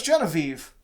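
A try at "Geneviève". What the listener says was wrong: No, there's an accent on that. She's French.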